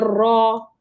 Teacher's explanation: Ra baris atas bunyi ra tafkhim. Ra baris depan bunyi ru tafkhim tebal.